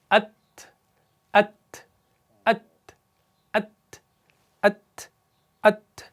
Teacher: ये जो ता है इसके अंदर सिफत हम्स पाई जाती है, यानी एयर फ्लो बाहर आता है